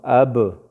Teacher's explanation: اوس اب کې زموږ اواز په شونډو باندې ودرېدو نو دا شونډه د دې مخرج شو.